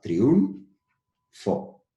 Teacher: el diptongo formado por la vocal cerrada I y la vocal cerrada u